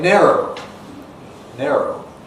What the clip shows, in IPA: ˈneroʊ